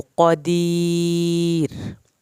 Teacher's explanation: वल्लाहु क़दीर। अब यहाँ पर क़दीर ये रा हमने पतला किया।